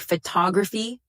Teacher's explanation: the second syllable gets the stress. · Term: word stress